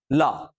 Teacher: रा ऐसे ऊपर गई फिर ऐसे बोलो फिर बोलो और ये फील करो कि जीभ ऊपर जा रही है फिर खुलना पड़ेगा तब र निकलेगा नहीं तो नहीं निकलेगा बोल के देखिए निकला फिर अगला जो है वो है पार्श्विक पार्श्व मतलब होता है उल्टा इसमें जीभ को पूरा उल्टा करना पड़ेगा तब जाके आप उसको बोल पाए बोलिए ला पूरी जीभ उल्टी करनी पड़ी तब उसको बोल पाए इसलिए इसको कहते हैं पार्श्विक दंत दंतोष्ठ मतलब इसमें दो चीजों की जरूरत पड़ेगी।